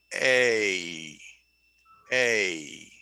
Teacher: okay so when i say a watch my mouth a a my mouth is moving when i say a because i start down lower a and then i go up high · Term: diphthong, diphthongs